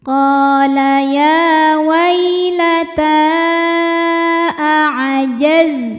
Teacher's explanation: Mad tabi'inya ta berbaris fathah panjang pada kata ya wailata. Hamzah a pada kata a'ajaztu, maka ta dipanjangkan boleh 4 boleh 5 harokat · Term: mad jaiz munfasil